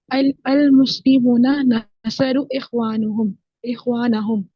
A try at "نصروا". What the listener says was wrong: نصرو تھوڑا سا کھینچے. نصرو اخوان.